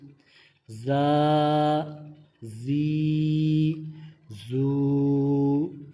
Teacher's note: زا میں سیٹی کی آواز واضح جو ہے وہ واضح ہم نکالیں گے